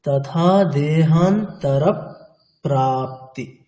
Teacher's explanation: আবার যেমন age usual যেমনটা আছে প্রা তেমনটা উচ্চারণ হবে অর্থাৎ যুক্তাক্ষরের প্রথম বর্ণটি দুবার উচ্চারণ হলো একবার হচ্ছে পূর্ববর্ণের সাথে হলো তারপরে পরবর্তী যুক্তাক্ষরটা যেমন আছে তার সঙ্গে তেমন চললো মানে